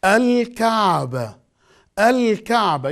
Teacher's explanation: Alif, Lam, Sukoon, Al, Kaf, Fatha, Al-Ka, Ain, Sukoon, Al-Ka, Be, Fatha, Al-Ka'ba, and the ta marbuta in the end, non-pronounced